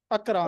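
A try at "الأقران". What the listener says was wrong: युवाखी आगे अकरान ना के नू, हाँ अकरानू,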